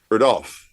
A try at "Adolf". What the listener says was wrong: Wrong. Wrong. You're putting the wrong enunciation on the wrong syllable.